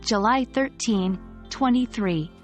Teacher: when we're saying the date, the stress usually falls on the day and the last part of the year. So, if we're saying July 13th, 2023, we'd stress 13 and 23. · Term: word stress